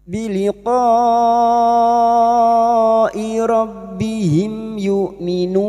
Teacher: Bertemunya mad dengan hamzah dalam satu kalimat mad wajib muttasil. Mad wajib muttasil lima harakat kita panjangkan.